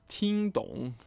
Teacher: first tone third tone meaning to understand